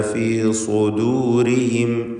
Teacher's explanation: സ്വാദിന് മാത്രമാണ് തഫ്ഖീം കൊടുക്കേണ്ടത്. ശേഷം ദാല് തർക്കീഖിൻ്റെ അക്ഷരമാണ്. ഇവിടെ ദു എന്നത് ദൂന്ന് ത്വാദ് പോലെ ആയി പോകുന്നത് വളരെ സാധ്യതയുള്ളൊരു കാര്യമാണ്, സൂക്ഷിക്കേണ്ടതാണ്, തെറ്റാണ്.